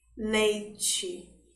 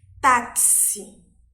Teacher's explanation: O E tem um som um pouquinho mais fraco do que da vogal I.